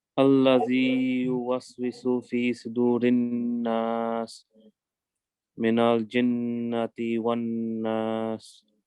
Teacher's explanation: remember again, the alif comes from the bottom of the throat.